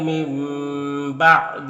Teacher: نون ساکن کے بعد با ہے تو نون کو اس میم سے بدل کر غنہ اور اخفا کے ساتھ پڑھیں گے، اس کو اقلاب کہتے ہیں۔